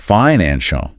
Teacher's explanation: Strong, confident emphasis on the middle